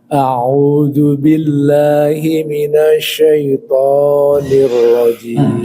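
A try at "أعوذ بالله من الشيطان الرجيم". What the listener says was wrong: Sya-nya bisa lebih dikuatkan. Minasyai'an.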